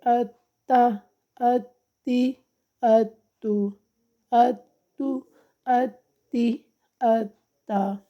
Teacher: سختی کے ساتھ ذرا رک کر ادا کرنا تشدید کو